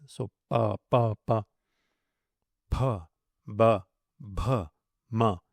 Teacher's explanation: Pa, ba, ma are stops formed with the lips.